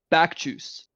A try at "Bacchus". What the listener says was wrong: Why did you pronounce it back juice?